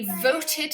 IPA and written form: ˈvəʊtɪd (voted)